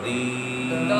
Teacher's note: یا ساکن سے پہلے زیر آئے تو یا مدہ ہوتا ہے، دو حرکت کی مقدار لمبا کریں گے